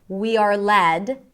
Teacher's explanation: We are led, comma, the phrase before that is totally connected. We are led, stress on led, by our gut instincts, right? And by our is connected, is reduced, because that's the less important part.